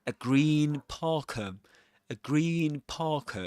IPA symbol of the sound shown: iː